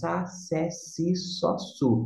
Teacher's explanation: O grego koiné sempre vai ter, o Szinho vai ter o som de S sibilante, aquele fraquinho